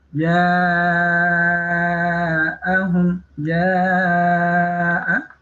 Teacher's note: Ini ada wajib mutasil, ada bacaan matobi'i bertemu dengan hamzah dalam satu kalimat. Ini dipanjangkan 2,5 alif atau 5 ketukan, 5 harokat